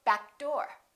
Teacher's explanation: even if the consonant doesn't have the same point of articulation make sure you hold that first consonant and kind of link it